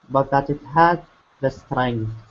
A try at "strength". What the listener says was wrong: So here you're saying strength, and you're using a hard R. It's str. Use a CH to replace the T, okay, to help push your tongue down. Strength.